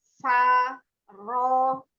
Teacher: Itbaqo itu lebih tebal daripada ro, ya. Faro. Nah, tapi fa-nya nggak boleh ikut tebal.